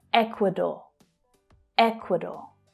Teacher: So that last syllable is the /ɔː/ as in 'door' vowel sound.